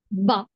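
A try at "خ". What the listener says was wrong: కింద కాదు, పైనే ఉంది కదా చుక్క. కింద ఉంటే బా అనేవాళ్ళు.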